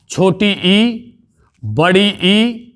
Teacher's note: ई और ई ये बोले जाते हैं आपके तालु की सहायता से